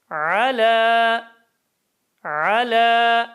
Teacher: tam e sesi vermiyoruz dikkat edelim a sesi zaten vermiyoruz E'ye yakın ses